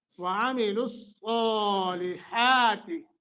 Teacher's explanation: صاد کو موٹا کر کے لمبا کر کے، اور ہا کا مخرج صحیح ادا کرنا ہے۔